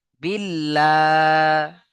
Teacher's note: আল্লাহর লামকে বারিক করে লা পড়তে হবে